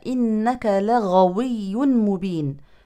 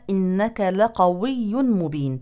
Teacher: من الاخطاء الشائعه ابدال الغين قافا وهذا كثير في بعض الدول ففي الايه الكريمه قال له موسى انك لغوي مبين لغوي من